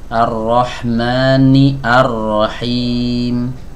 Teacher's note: Hamzah wasal yang ada pada kata arrahim tidak kita baca karena dia berada di tengah kalimat